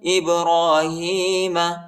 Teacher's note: ہاں پر کھڑی زیر آیا ہے، اس کو ایک الف کے مقدار تک کھینچے